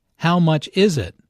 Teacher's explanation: Notice that the main sentence stress falls on is in this question.